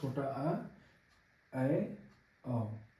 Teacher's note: जिनके उच्चारण में मुख आधे से ज्यादा खुलता है। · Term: अर्ध विवृत